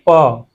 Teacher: प में दोनों होठ आपस में बंद हो गए खुलते हैं। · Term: ओष्ठ